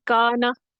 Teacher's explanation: کانا کلیئر آواز ہے، متحرک ہے نون، اس میں کوئی غنہ نہیں ہے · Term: متحرک نون